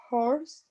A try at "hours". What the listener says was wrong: Hours. The H is silent in that word. You don't say the H in that word.